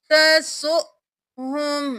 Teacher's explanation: حمزہ کے اوپر جزم ہے، جھٹکا دے کر پڑھیں گے. وہ خالی ہے، اس کو نہیں پڑھیں گے.